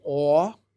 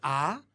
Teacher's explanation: They don't really differentiate between the qamats, which is o, and the patah, which is a. They pronounce both as a.